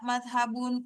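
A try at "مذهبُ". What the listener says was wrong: Madhabu, jangan madhabun, madhabu aja.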